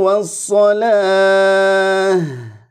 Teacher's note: udaranya harus ngalir dia punya sifat Hames dan rukhawah